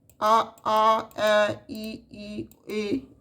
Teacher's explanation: ਗੁਲਾਈ ਰਹਿਤ ਉਚਾਰਨ ਸਮੇਂ ਬੁਲਾਂ ਦਾ ਅਕਾਰ ਗੋਲ ਨਹੀਂ ਹੁੰਦਾ ਆ ਆ ਐ ਈ ਈ ਏ ਇਹ ਛੇ ਗੁਲਾਈ ਰਹਿਤ ਸਵਰ ਨੇ ਪੰਜਾਬੀ ਦੇ ਸਵਰ ਨਾਦੀ ਹਨ ਅਤੇ ਹਰੇਕ ਸਵਰ ਦਾ ਨਾਸਕੀ ਉਚਾਰਨ ਵੀ ਮਿਲਦਾ ਹੈ।